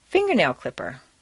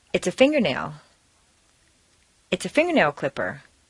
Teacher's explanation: word set phrase combine three things finger plus nail plus clipper leave the stress on the first word